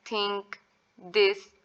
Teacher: टंग होती है वो टच करती है हमारे अपर टीथ को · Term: डेंटल